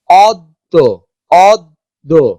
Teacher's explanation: দ দুইবার উচ্চারিত হচ্ছে, কিন্তু অদ্য জ ফলা কিন্তু উচ্চারিত হচ্ছে না